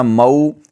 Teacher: مو یہ واو لین ہے، اس کو تھوڑا سا لمبا کریں گے، نرمی کے ساتھ ادا کریں گے۔ مو آگے او یہاں کھینچیں گے، دال پر آواز نہیں کھینچیں گے۔